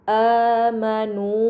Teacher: terdapat hamzah bertemu alif. Ini dinamakan mad badal, maka harus dibaca panjang selama dua harakat